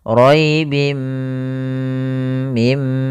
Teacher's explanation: bhunah idgham artinya memasukkan bhunah disertai dengan ghunah yaitu langkahnya adalah memasukkan tanwinnya ke mim dan ditahan gunahnya · Yaitu langkahnya adalah memasukkan tanwinnya ke mim dan ditahan gunnahnya. Raibim mim, panjangkan dulu, tahan gunnahnya 2 harokat. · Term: idgham bi gunnah